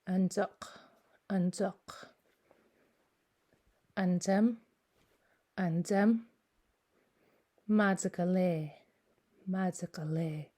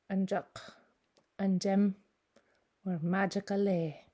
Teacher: if you're speaking from a Gitxsan accent, it can sound more like a DZ or even a TS.